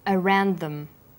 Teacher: The final d sound in around is similar in pronunciation to the first sound in the word them.